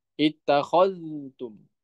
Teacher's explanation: Kalau hafaz diizharkan zalnya ittakhadtum ya sifatnya rokhwa.